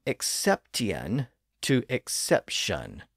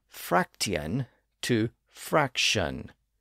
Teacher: those words the T sound shifted to an sh sound and the two distinct syllables at the end were slurred into one